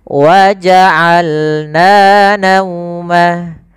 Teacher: Dari tengah tenggorokan kita lafalkan ain